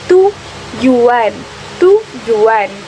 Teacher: Misalnya bunyi teh yang merupakan bunyi api apialolar pada kata tujuan ikut mengalami pembulatan karena pengaruh vokal U sehingga terdengar sebagai TW. Di kayak kita tuh bilang tujuan itu ada kata W-nya di U. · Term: labialisasi